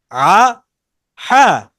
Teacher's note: এখানে কি জবর দিয়ে হামজা আর হাটা এনেছে আ হা এরপরে হলকের মাঝখান থেকে কি আইন আর হা উচ্চারিত হয়